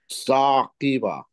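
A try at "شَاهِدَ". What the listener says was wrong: আচ্ছা, আপনি, না এটা হচ্ছে হা, হ্যাঁ, মাঝখানে একটা হা, তারপর এটা দা, আর প্রথমটা হচ্ছে শা, শিন, এবার বলেন। হ্যাঁ, এটা হচ্ছে শাহিদা, শাহ তালিবস্য।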